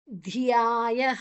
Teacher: ದ ಮತ್ತೆ ಯಾ ದೀರ್ಘಾಕ್ಷರ, ಧ ಮಹಾಪ್ರಾಣ.